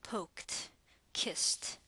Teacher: default value is do, but it becomes a to when a voiceless sound precedes it.